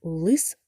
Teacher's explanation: в слові лис звук л твердий приголосний звук